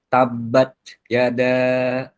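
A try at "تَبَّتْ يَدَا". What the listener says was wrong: Nggak muncul. Ya, nggak muncul ya. Jelas ya, caranya begitu. Jangan turun ujung lidahnya ke bawah. Karena di sana kita mendekat ke makhraj huruf sin. Huruf sin makhrajnya di mana? Ujung lidah bertemu dengan dinding bawah, bagian dalam gigi seri bawah. Berarti posisi ada di bawah.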